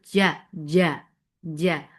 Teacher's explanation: There should not be any flow of breath here on jim. This is majhura letter. The sound will be cut off.